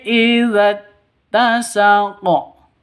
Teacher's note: Tasaqo qofnya berubah menjadi sukun karena waqaf. Berarti sudah memenuhi syarat qalqalah. Karena di akhir berarti qalqalah ku kubra.